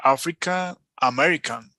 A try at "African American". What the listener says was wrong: No, no hay que separarlo. African American. Ya es la entonación, más no tiene que despegarse nada, ¿no? African African American. African American. Sube un poco en American.